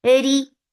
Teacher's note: Ra is light because wherever there is kasra on ra, it is light.